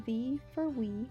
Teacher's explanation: sounds of w are pronounced as v